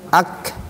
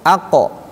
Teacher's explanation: Aqo a ak. Nah, kalau kaf agak ke depan dia. Ak. Kalau qof aqo ke belakang tuh. Ak aqo ke belakang.